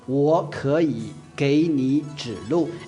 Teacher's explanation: it's all third tone except for the very last word which is fourth tone